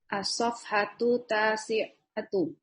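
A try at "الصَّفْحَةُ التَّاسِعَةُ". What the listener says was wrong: Jamil. As-safhatu tasi'atu. Ahsan.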